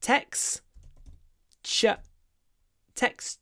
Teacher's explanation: so we see XT but we say KS